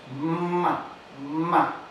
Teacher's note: es sonora porque las cuerdas vocales están tensionadas